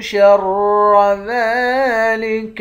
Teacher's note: را کو موٹا پڑھیں گے، دال کے اوپر کھڑا زبر ہے، اس کو ایک الف کی مقدار کھینچ کر پڑھیں گے۔